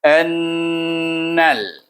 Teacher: dia baca dengan dengung wajibul guna iaitu nun bertasydid. Bunyinya annal.